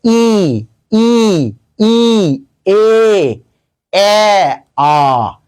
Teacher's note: জীবটা আস্তে আস্তে উঁচু থেকে নিচুতে আসছে। এইজন্য এটার নাম হল উচ্চ।